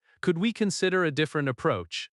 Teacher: stress, consider, and approach. Keep could softer but clear.